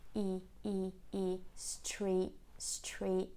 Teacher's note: But what she does do at the end is a glottal stop, and she doesn't say the T, she just finishes in this position for the long E sound, which is, by the way, very tense and smiley